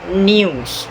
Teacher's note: in British English, you get the n sound plus y sound and plus the u sound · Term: yod